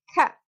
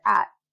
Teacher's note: I'm not pronouncing the T, I'm stopping it in my throat. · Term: glottal stops